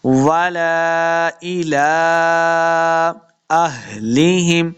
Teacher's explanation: ہاں کو ہم نے تلفظ کے ساتھ پڑھنا ہے، یہ سینہ کی طرف سے ادا ہوگا۔